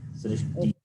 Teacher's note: Srishti being E, then Visarga is pronounced along with the preceding vowel, which is Ikara, E. Srishti, not Srishtiha.